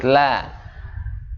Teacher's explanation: di antara celah la-nya itu, lidah kita itu ada lubang di sisi kanan kirinya.